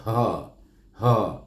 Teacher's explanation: Jadi kita akan rasa getaran bunyi Ha tu di pangkal halqum. · Ha bermula daripada pangkal halqum. Betul-betul pegang bawah halqum yang berbonjol tu, sebut Ha.